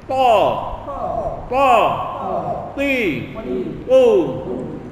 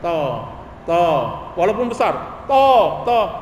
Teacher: Nah, jadi hanya satu-satunya cara untuk bunyi huruf yang benar dari to, tekan lidah ini, tekankan ke atas, tegangkan, angkat lidah bagian belakang, pangkal, dan juga lidah depan tengah ini naikkan ke langit-langit